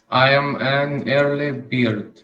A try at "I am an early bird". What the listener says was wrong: No, not beard, it's bird.